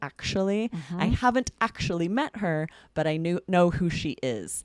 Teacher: We actually make that the ch sound in the middle usually.